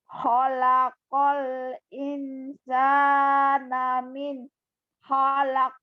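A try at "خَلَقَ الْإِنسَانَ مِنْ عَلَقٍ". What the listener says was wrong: Min alaq, bukan halak. Min alaq.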